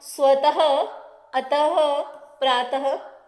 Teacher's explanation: ऐसे ही विसर्ग, विसर्ग यह दो बिंदी होती हैं, यह हमें अह ह की ध्वनि देते हैं। अ और ह दोनों को जोड़कर जो ध्वनि निकलती है वह ध्वनि का उच्चारण हम विसर्ग को बोलते हुए करते हैं